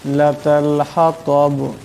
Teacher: এখানে তো আছে, তোর আওয়াজটা মোটা করে পড়তে হবে। এখানে দমসাল্লা বা সাকিন হয়ে যাবে এবং আওয়াজটাতে টক্কর খাবে।